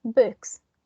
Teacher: So for example, in the case of books, the K here is voiceless. So in this case of this plural, the S sound, it's going to be voiceless as well. That is why it's books, because the K is affecting the second element, the second sound.